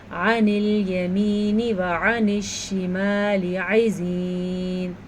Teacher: عین جو ہے اس کو بھی آپ نے حلق سے نکالنا ہے اور صاف ستھرے طریقے سے نکالنا ہے.